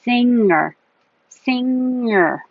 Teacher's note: quickly and make a go singer kind of slide it back my tongue in the back is sliding and still keeping contact with the top of my mouth